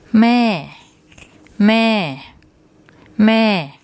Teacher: So what we have here, we have the mo, ma, m initial consonant and the sara air vowel. Mo, ma is a low class consonant, and we have the first tone mark, and the tone rule for that is falling.